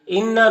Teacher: اِنَّا نون مشدد ہے تو نون مشدد میں غنہ ہوتا ہے، نون کی آواز کو ناک میں لے جا کر گنگنائیں گے 1 الف کی مقدار